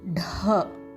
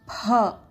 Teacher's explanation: See, these are Mahaprana letters. So you have to read it as Dha. Don't read it as D.